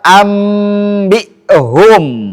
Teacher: Ini dirubah nun sukun menjadi bunyi mim. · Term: iqlab